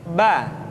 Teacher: dikeluarkan dengan cara merapatkan kedua bibir kita batu Hai di mu ketika mati maka terdengar suara pantulan bamberg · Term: hurufba